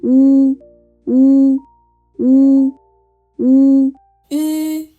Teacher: lips rounded, and the tongue is high but pulled backward.